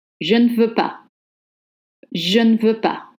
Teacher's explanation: the E is softened and almost dropped